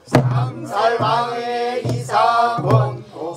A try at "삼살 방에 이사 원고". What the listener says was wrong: 삼살 방에 방은 짧습니다.